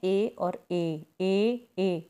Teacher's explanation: एक कंठ तालु, कंठ गले और तालु का जब प्रयोग किया जाता है तो वो ध्वनियाँ होती हैं ए और ए कंठ तालु ध्वनियाँ हो गई। ए और ए के उच्चारण में कंठ और तालु दोनों का काम रहता है